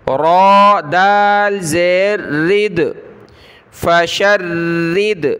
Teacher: را کے نیچے زیر آ گئی تو یہ را کو ہم نے باریک پڑھنا ہے، پتلا پڑھنا ہے، ٹھیک ہے۔ دال پر ہم نے قلقلہ کرنا ہے، دال کلرفل ہے، را دال زیر رد، فشرد، ٹھیک ہے، اس کو فشرد، را کو موٹا نہیں پڑھنا، سخت کریں گے تشدید کی وجہ سے۔